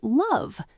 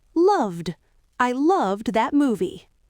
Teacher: What about the word love? Ends in a voiced V sound. Add a D. Loved.